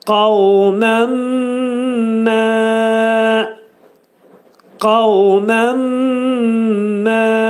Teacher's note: Yəni, nun hərfi mimə çevrilir və burunda deyilir. · Nun hərfi itir və mim hərfinə çevrilir. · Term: idğam mə'al-ğunnə